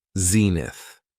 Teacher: it has two syllables and the stress is on the first syllable